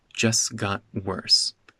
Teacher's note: So just got becomes just got. No glottal stop. The T disappears.